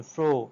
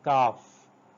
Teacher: F sound, f as in fro, as in calf. Air is forced through the upper teeth and lower lips. We have a rounded sort of lower lip, and upper teeth come near the lower lip and a friction is created.